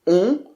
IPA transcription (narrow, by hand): ɔ̃